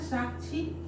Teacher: क और श से मिलकर बना है। और इसका उच्चारण में पहले वही आधा क आता है फिर श आता है। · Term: संयुक्त व्यंजन